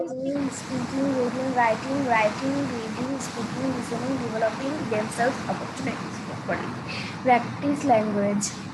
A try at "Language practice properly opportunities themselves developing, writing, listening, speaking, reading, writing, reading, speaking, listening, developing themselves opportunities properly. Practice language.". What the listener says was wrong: হয় নাই। প্রপারলির মধ্যে তুমি ব্রিথ নিয়েছো, তাই না? হ্যাঁ, একটু মানে তুমি নিয়েছো।